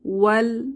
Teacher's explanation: এখানে আলিফ মাদ আছে, কিন্তু আমরা আলিফ মাদ না করে ওয়াওটা সরাসরি লাম সুকুনকে ধরবে। ওয়াও ফাতহা লাম সুকুন ওয়াল। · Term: সুকুন যুক্ত হরফ